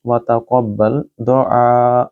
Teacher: آئین کو گلے سے بولیں، اس کو لمبا کریں، یہ مد متصل ہے کیونکہ اس کے بعد حمزہ آ رہا ہے ایک ہی لفظ کے اندر، اور کیونکہ یہاں وقف تام ہے یعنی کہ آیت ختم ہو رہی ہے، لہٰذا آپ اس کو جھٹکے کے ساتھ ادا کریں گے۔